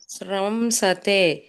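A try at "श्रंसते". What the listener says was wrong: ಶ್ರಮ ಹೇಳಬೇಡಿ ಮಾತಾಜಿ ಮ ಬರಲ್ಲ ಅಲ್ಲಿ ಶ್ರವ ಬರುತ್ತೆ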